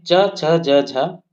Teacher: इनका उच्चारण जिह्वा के मध्य भाग से तालु में स्पर्श करके होता है। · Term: तालव्य वर्ण